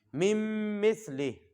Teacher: جی جی نون کو نہیں پڑھنا چونکہ یہ نون کے اوپر جزم ہے اور اگلے میم کے اوپر شد ہے، تو میم کو میم کے ساتھ ملانا ہے. نون لکھنے میں تو آئے گا لیکن پڑھنے میں نہیں آئے گا.